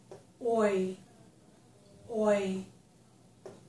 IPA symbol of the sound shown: ɔɪ